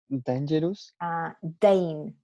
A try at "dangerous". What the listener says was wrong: Dane, no da. Dangerous.